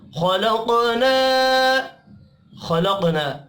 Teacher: قاف ساکن ہے، قلقلہ کریں گے